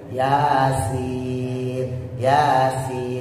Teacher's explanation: kalau sin tipis di bawah, antara gusi bawah sama gigi bawah. Kalau sin tebal adanya di langit-langit atas, jadi beda.